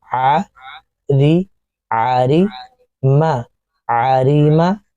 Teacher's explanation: را کی آواز موٹی نہیں ہوگی کیونکہ زیر ہے اس کے نیچے